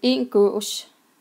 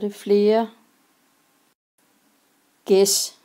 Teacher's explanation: Her kan man se, at vokalen har ændret sig fra et å over til et æ.